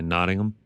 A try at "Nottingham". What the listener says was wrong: It's supposed to be Nottingham. Like You don't pronounce the H.